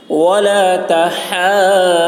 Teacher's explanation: ہا کو حلق سے ادا کریں گے ، کھینچیں گے، کھینچ کر ضاد میں ملائیں گے، ضاد کی · کھینچ کر ضاد میں ملائیں گے، ضاد کی آواز بھی موٹی ہوگی ، ولا تحاضون، ہا کو ضاد کے ساتھ جب ملائیں گے